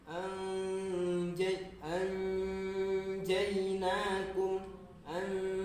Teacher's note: Jadi ketika nun sukun bertemu dengan jim, membacanya itu dengungnya itu dengan langsung disamarkan ke dalam huruf jim.